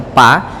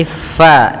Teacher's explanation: Fa idza, hati-hati dalam lafal fa, jangan dibaca pa tapi fa, alirkan nafas kita